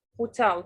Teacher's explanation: The stress is on the second syllable. الstress بيكون على المقطع الثاني and not the first one.